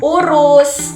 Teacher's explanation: U itu terletak di tinggi bawah belakang.